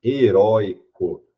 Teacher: eu tenho a minha penúltima sílaba forte heroico e ela é uma paroxítona com ditongo aberto que não é mais